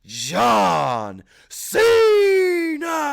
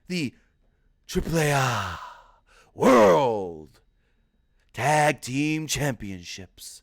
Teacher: But now, he's really breathy.